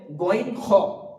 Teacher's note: মাঝের অংশ থেকে হবে আইন হা এবং হামজা হা যেটা আছে এটা উচ্চারণ হবে একদম কন্ঠনালীর নিচে বা একদম বুকের দিক থেকে। তো কন্ঠনাল এই উপরের অংশ থেকে উচ্চারিত হবে গন খ